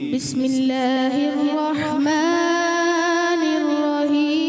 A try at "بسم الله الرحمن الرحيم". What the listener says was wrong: رحیم میں ہا کی ادائیگی کے لیے رکھیں. دوبارہ پڑھیں.